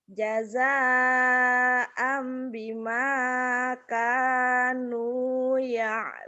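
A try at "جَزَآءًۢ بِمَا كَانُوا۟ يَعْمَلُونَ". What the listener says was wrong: ya malun. Terbalik. Terbalik, terbalik, terbalik. Amnya ikhlas ditahan. Jaza'am jaza'am bima kanu ya'malun.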